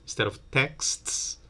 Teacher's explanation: The t here in the middle between k and s might be deleted.